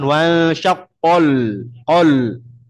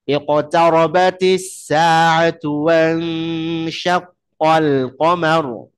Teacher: Tipiskan lam sementara dia berada di antara dua huruf tebal. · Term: lamnya tetap tipis